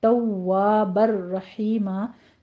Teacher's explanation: तनवीन का कायदा आगे आ रहा है, आगे उसके बाद रा है, यहाँ इदगाम बिला गुन्ना करेंगे, गुन्ने की आवाज़ नहीं आनी चाहिए, तनवीन को बिल्कुल स्किप कर देंगे, नून की आवाज़ को। रो मुफ़ख्खम पढ़ेंगे और आगे हा की आवाज़ वस्ते हलक से अदा करते हुए बारीक अदा करेंगे, और रहीमन है, रहीमा हम वक्फे इब्दाल कर देंगे, मादी बस होगी, 2 काउंट करने हैं यहाँ भी।